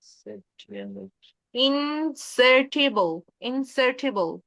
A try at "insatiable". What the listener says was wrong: ইনসেটিবল না, এটা it's wrong. এটা হবে ইনসাইশাবল। ইনসাইশাবল। প্রথমে হচ্ছে ই না,